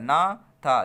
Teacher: ना और था बोलिए, दंत में आएगा ना था। जिह्वा जो होती है दंत में आपके दांतों में टकराती है